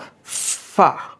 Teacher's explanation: উপরের দাঁত নিচের ঠোঁটের উপরে রেখে হাওয়া বের করেছিলাম